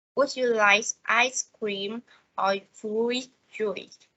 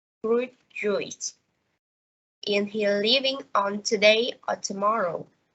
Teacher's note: the tones rise on the first part of the question and fall on the last part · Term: alternative questions